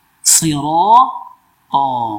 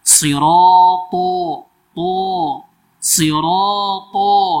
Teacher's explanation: Sirata, tidak boleh sirato, sirato sama-sama tebal, tidak boleh. Karena ra yang fathah ikuti alif itu lebih tebal daripada ta yang fathah saja. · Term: maratibul tafkhim